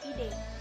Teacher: bunyi E dengan ciri-ciri tengah, depan, tak bulat